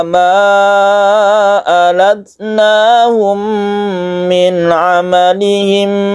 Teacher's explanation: Di sini banyak yang panjang, terutama ada mad jaiz munfasil kita panjangkan. Alatnahum, mim bertemu dengan mim, idgham mimi, kemudian idgham mimi lagi kita dengungkan